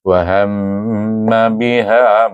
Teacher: Eh baik selepas itu kita dah sambung wau alif wa ha alif mim. Mim bertasyid lagi sekali kita jumpa mim bertasyid wajib didengungkan dengan dengung dua harakat.